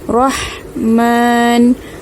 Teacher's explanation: ha baris mati, makhrajnya di tengah kerongkong ada angin. Rahman. Okey, kita nak matikan huruf nun ini.